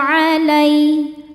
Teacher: karena ya sukun sebelumnya baris fathah dibacanya lembut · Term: lin